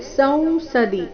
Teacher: ಸ ನಂತರ ಬಂದಿರೋ ಅನುಸ್ವಾರದ ಉಚ್ಚಾರಣೆ ನಾಸಿಕಾ ವ ರೀತಿ ಬರಬೇಕು ಕೊನೆಗೆ ದಿ ರಸ್ವ ಸಂಸದಿ ಈ ರೀತಿ ಸಂಸದಿ ಅಂತ ದೀನ ದೀರ್ಘ ಹೇಳಬಾರ್ದು